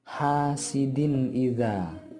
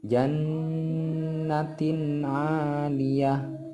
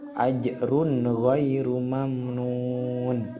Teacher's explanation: suara nun mati atau nun sukun tersebut dan tanwin dipendekkan, tidak boleh disuarakan lama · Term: idhar khalqi